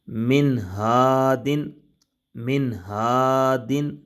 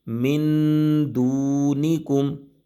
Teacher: اب من یعنی کہ آواز کو ناک میں لے کر جانا، اس کو غنہ کہتے ہیں۔ آواز کو ناک میں روکنے کو غنہ کہتے ہیں۔